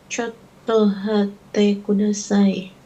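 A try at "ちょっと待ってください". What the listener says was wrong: Chotto mate kudasai. Chotto mate kudasai, bukan hate. Chotto mate kudasai.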